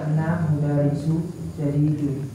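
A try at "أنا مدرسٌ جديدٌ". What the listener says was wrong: Di tanwin aja.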